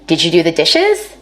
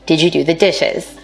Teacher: African-American speakers may be more likely to ask a yes no question with a level tone or a falling tone · yes no question with a level tone or a falling tone for white speakers we expect a rising tone in questions like these